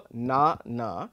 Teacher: the word banana has the stress on the second syllable